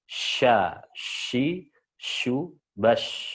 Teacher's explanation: Menyebar berhembus udara ya di mulut ya. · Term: Tafasyi